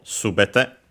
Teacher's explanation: When followed by technically it's a noun, which means everything, all. Then and yes, it's accented on the first syllable